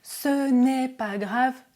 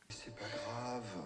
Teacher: Très souvent, à l'oral, le ne disparaît.